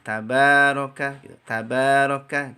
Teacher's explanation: Apa panjang ya Banyakin baca panjang tabaroka itu kan Mad Thobi'i Mad Thobi'i itu cukup dibaca dengan dua harokat diayun saja biar tidak kepanjangan